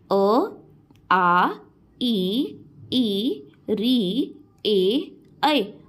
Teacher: इनको बोलने के वक्त आपके जो होठ है वो सर्कुलर फॉर्म में नहीं आ रहे। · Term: अ वर्तुल स्वर